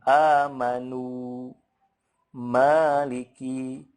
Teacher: yang mad itu kan yang dipanjangkannya adalah vokalnya, bunyi u-nya, bukan gunahnya. Jadi kurang tepat ketika baca kita gunahnya terus-terusan.